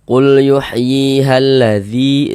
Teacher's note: Qul yuhyihalladzi dzi dibaca panjang. Ini namanya adalah mad jaiz munfasil. · Maka huruf yang memiliki harokat kasroh ini dibaca panjang, sehingga dzi dibaca panjang.